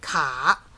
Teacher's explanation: 3rd tone, down, up.